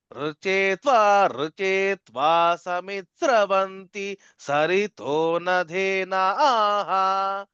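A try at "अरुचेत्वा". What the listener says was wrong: ఈ రుచేత్వ అన్నప్పుడు అరుకారం చెప్పాలండి. అరచేత్వ అరచేత్వ రుచేత్వ. అది గుర్తుపెట్టుకోండి. అరుకారం అది.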